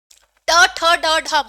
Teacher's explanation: ट, ठ, ड, ढ मूर्धन्य है